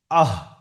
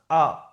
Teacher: গলা শুরু হয় নিচের দিক থেকে, গলা শুরু মাঝখান শেষ। তো গলা শুরু থেকে উচ্চারণ হয় হামজা হা